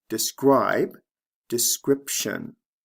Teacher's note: Notice there are two sound changes here. The long I becomes a short I. Describe, description. And the B becomes a P sound before the T.